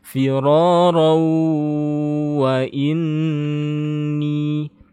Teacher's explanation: Untuk ini firoron kalau kita berhenti dia tetap mad iwad. Nah, kalau kita lanjut dia fathatain yang bertemu waw, maka ini dibaca idgham bi gunnah.